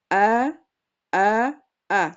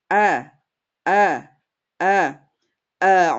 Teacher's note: Jadi fathahnya orang Arab itu adalah fathah pertengahan. Tidak boleh terlalu lebar nanti khawatir jadi tebal. O tidak tidak juga terlalu bawah khawatirnya nanti jadi imalah.